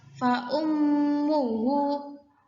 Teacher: mim bertasdid, gunnah ditekan. Fa ummuhu itu terjadi karena mim yang pertama bersukun, yang kedua terus berharokat.